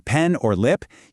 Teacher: So when you say the P sound like in pen or lip, you actually have to pop your lips. Do you feel that little burst of air?